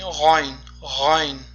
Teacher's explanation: Demak, g'oyn, g'oyn harfi avvalgi darslarimizda o'tgan xo harfiga ham juda mahraji juda ham yaqin. Demak, xo harfiga o'xshab talaffuz qilinadi, ya'ni tomog'imizning, xalqimizning eng yuqori qismida. Ya'ni g'oyn, g'oyn deb talaffuz qilinadi.